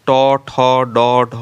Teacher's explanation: এই 5টি ধ্বনিকে ট বর্গীয় ধ্বনি বলে। এই ধ্বনিগুলো উচ্চারণের সময় জিহ্বায় অগ্রভাগ কিঞ্চিত উল্টিয়ে উপরের মাড়ির গোড়ার শক্ত অংশকে স্পর্শ করে উচ্চারিত হয় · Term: মূর্ধন্য ধ্বনিও